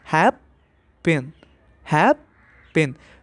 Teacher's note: तो you can see कि जो फर्स्ट सिलेबल है उसमें ज़्यादा स्ट्रेस है as compare to the last syllable